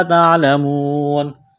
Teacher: واو ساکن سے پہلے پیش ہے، حروف مدہ واو ہے، الف کے برابر کھینچنا ہے، یہاں پر وقف کریں گے تو نون کو ساکن کریں گے۔